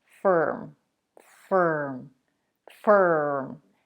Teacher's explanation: the star sound almost takes over the vowel it's as though you want to connect both consonants without inserting any vowel